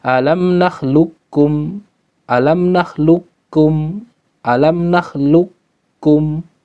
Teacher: Fil makan idghaman kamil, dengan idgham yang sempurna. Artinya huruf qaf hilang sama sekali, tinggal kaf, ya. Min ghairi baqa'i sifatil istilah, tanpa adanya sisa istilah di huruf qaf, ya, fil qaf wa ba'duhum.